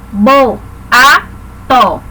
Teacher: encontro de duas vogais que ficam em sílabas diferentes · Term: Hiatos